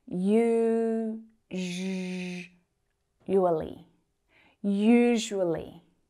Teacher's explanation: pay attention to the way that I said usually with that y sound and the zh